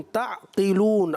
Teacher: عین کی ادائیگی واضح کرنی ہے، قاف کو پر ادا کرنا ہے